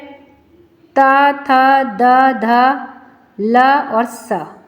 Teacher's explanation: इन सभी में हमारे जीव दांतों से स्पर्श करती है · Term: दंत या वर्ना